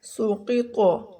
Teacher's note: قاف بھی موٹا ہے، طا بھی موٹا ہے